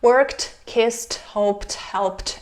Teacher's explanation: we read it as voiceless t after voiceless consonants except the letter T.